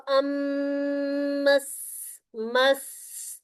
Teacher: साकिन हुरूफ में सिफात और भी ज्यादा नुमाया करनी होती है, तो वह मस, मस, ये जो सीटी है ना सीन की, ये नुमाया आ जानी चाहिए